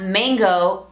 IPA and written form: ˈmæŋgoʊ (mayngo)